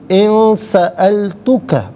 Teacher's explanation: ناک میں آواز دے جا کر گنگنانا، اسے اخفا کہتے ہیں